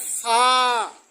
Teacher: নিচের ঠোঁটের পেট সামনের উপরের 2 দাঁতের আগার সঙ্গে লাগাইয়া উচ্চারিত হয় ফা